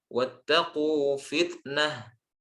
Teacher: Taknya jangan jadi sin, fitnah, tapi tak tetap syiddah.